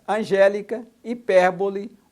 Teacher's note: as proparoxítonas tem o som mais forte na antepenúltima sílaba